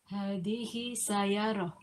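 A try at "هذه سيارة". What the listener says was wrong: Sayaratun atau sayarotin? Dibaca tanwinnya ya. Hadhihi sayaratun.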